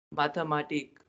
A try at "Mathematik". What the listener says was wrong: Mathematik. Not mathe. In fact, Germans don't pronounce the sound. So as I said that th is equivalent to t, means s is silent here. As if you are pronouncing mate. So mathematik.